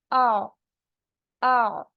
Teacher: आइन का मखरज आ हलक के दरमियानी हिस्से से अदा होता है। आपको पता है ना, हलक के मिडिल पार्ट से अदा होता है।